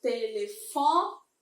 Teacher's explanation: Se eu falo telefone, terminou em E, mas eu tenho a penúltima sílaba sendo mais forte. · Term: paroxítonas